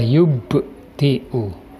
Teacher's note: yaitu huruf ba yang disukun, membacanya memantul. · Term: qalqalah sughra